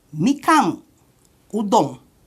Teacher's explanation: Esse é o único caso em que a sílaba termina com uma consoante, que é a nasal.